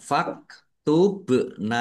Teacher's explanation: Bak sukun bacaan qalqalah dibaca memantul ditampakkan pantulannya.